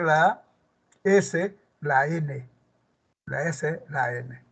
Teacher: la N, por el punto de articulación, es alveolar. Es alveolar. Por el modo de articulación, como vas a ver más adelante, es nasal.